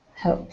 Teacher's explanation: When you make that P sound, you won't feel very much vibration in your throat because it's kind of a silent sound.